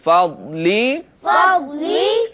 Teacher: ضاد حروف مستعلیہ میں سے یہاں پر موجود ہے لیکن ہم اس ضاد کو پر پڑھیں گے. جیسا کہ آپ کو پتا ہے کہ حروف مستعلیہ ہمیشہ ہر حال میں پر پڑھے جاتے ہیں لیکن یہ ساکن ہے.